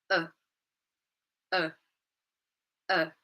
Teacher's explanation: So it's a fast sound and the pitch of the sound is very low. Okay, so it's quick, it's low pitch, it's a vowel sound. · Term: schwa sound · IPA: /ə/